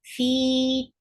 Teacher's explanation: Sel, na is 2 counts long. Fi, 2 counts long, because this is part of long vowels